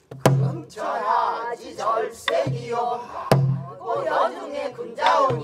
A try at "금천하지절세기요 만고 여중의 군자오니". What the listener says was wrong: 만을 먹고 들어가잖아. 금 앞에서 달아서 들어가. 금천하지절세기요 만고 여중의 군자오니